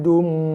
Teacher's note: Ni bagi dua jumpa mim, tekan pada mim, tutup mulut, berserta dengung.